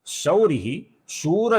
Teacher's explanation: शौरी का जो विसर्ग है इसका भी हम आगे श आने के कारण अपूर्ण श ऐसा उच्चारण करते हैं